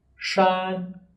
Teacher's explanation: our pitch is straight and does not change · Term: first tones